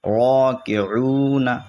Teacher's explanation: را موٹا ہوگا را پہ زبر ہے. کاف زیر کی را کی عین واو پیش عو راکعو نون زبر نا راکعون.